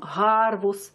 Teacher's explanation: И другое произношение, которое говорит о том, что это «г» очень широкое, почти глухое на слух, очень открытое.